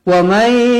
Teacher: nun kosong bertemu ya, idgham ma'al gunnah, dibaca dengan 2 harokat